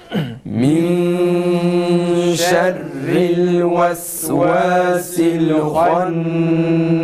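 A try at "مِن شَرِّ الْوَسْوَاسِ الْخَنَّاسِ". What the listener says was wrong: Yalnız vav harfine dikkat edelim. Şerril ves değil, ves yani Türkçedeki ve'ye hiç benzememesi gerekir.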